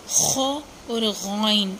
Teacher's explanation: خو اور غین ان دونوں کا سیم مخرج ہے، یہ دونوں نقطے والے ہیں اور دونوں گلے کے اوپر والے حصے سے ادا ہوتے ہیں۔